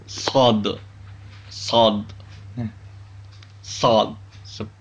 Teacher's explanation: Makhraj huruf sod adalah ujung lidah menghadap dan mendekat di antara gigi seri atas dan bawah.